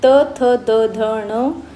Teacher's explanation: जे वर्ण उच्चारताना आपल्या जिभेचे टोक वरच्या दाताच्या मागच्या बाजूस टेकते त्यांना आपण दंतवर्ण असे म्हणतो